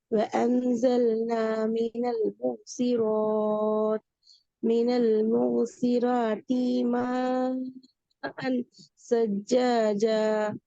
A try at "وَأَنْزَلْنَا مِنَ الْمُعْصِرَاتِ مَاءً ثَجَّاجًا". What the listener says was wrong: இந்த மான்லதான் உங்களோட பிரச்சனை வருது. இது எத்தனை செகண்ட் நீட்டணும்? 3 செகண்ட். அப்பதான் உங்களுக்கு அந்த அந்த அந்த அந்த சிஸ்டம் பேர்ல அந்த இடம் அதான் பிரச்சனை. ما سجاجة.